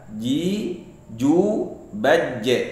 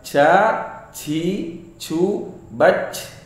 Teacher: Ketika mengucapkan huruf jim, tidak boleh ada napas yang mengalir.